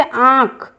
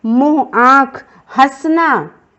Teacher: आँख बोलते समय नाक और मुंह दोनों से हम उच्चारित करते हैं। जब भी हम उच्चारण कर रहे हैं आँख का, तो हम दोनों नाक और मुंह दोनों से कर रहे हैं। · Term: अनुनासिक